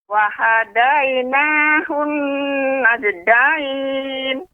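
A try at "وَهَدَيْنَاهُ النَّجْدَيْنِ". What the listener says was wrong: Nah, ini pada qalqalah jim ini terlalu cepat Nek. Ya, jadi ketika kita membaca lambat, qalqalah juga melambat. Wa hadainahun najdain, tidak najdain, tidak seperti itu.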